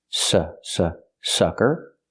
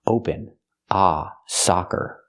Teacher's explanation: sucker is the first word closed and relaxed s s sucker and the second word is soccer open ah